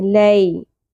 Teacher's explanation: یہاں پر ہمارے پاس یا ساکن ہے اور یا ساکن سے پہلے زبر ہے، یہ حروف لین میں آ جائے گا. یہ حرف لین ہے کیونکہ یا ساکن سے پہلے زبر ہو تو نرمی سے ادا کرتے ہیں. لی، لیل نہیں پڑھنا، لی.